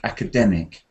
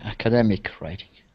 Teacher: the stress pattern is on the third syllable, like academic